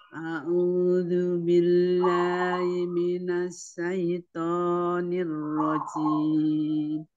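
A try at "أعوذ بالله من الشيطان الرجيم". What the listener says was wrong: Ya, shinnya lebih disebar lagi. Asyaitonir rajim.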